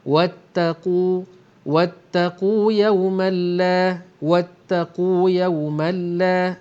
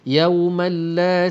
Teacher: ada tanwin berjumpa dengan lam, idgham bila gunnah ataupun idgham bi ghairi gunnah. Maka kita baca terus lompat ke bunyi lam.